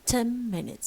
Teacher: Consonant 1 is no, consonant 2 is ma. Both are nasals and they have to assimilate because na is an alveolar consonant and ma is a bilabial consonant. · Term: regressive